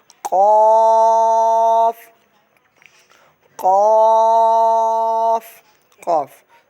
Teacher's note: زبان کی جڑ اور تالو کے نرم حصے سے ادا ہوتا ہے۔